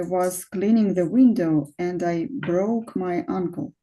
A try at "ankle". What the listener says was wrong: But not uncle. It's ankle. Yes. Uncle is dada. And here ankle is a different thing.